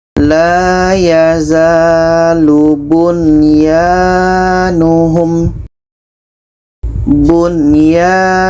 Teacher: Nun jelas, ya jelas, dan tidak ada dengung. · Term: izhar wajib